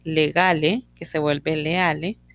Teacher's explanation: las fricativas sonoras se van a perder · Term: síncopa